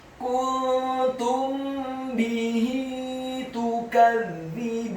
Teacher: Apabila ada huruf mim yang sukun atau mati bertemu dengan huruf ba, maka hukum bacaannya adalah dikunnahkan, ikhfa syafawi.